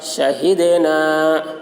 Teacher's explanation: دال حروف قلقلہ میں سے ہے اور اس پر جزم ہے، اس لیے دال میں قلقلہ ہوگا. شہدنا الف سے پہلے زبر ہے، الف مدہ ہوا، اس لیے الف مدہ کو ایک الف کے برابر کھینچ کر پڑھیں گے۔